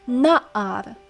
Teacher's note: Notice how the accent falls on the first syllable. It's na'ar and not like nahar.